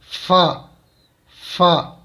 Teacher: اسی طرح سے حروف شفویہ یعنی با میم واو اور فا، مخرج نمبر 15. اوپر والے دو دانتوں کا سرا اور نیچے کے ہونٹ کا اندرونی حصہ، اس سے فا ادا ہوتا ہے، یعنی نیچے والا جو ہونٹ ہے اس سے اپنے اوپر والے دانتوں کا سرا لگا دیں تو فا ادا ہو جائے گا.